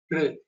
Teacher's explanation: there is no k sound in it, just r, R. like r in crystal.